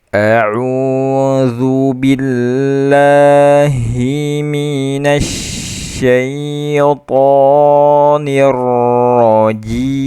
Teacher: Karena waw itu kita tahu waw mat adalah jauf makhrajnya, bukan hidung.